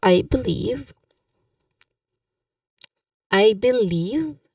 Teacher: I believe second syllable is stressed.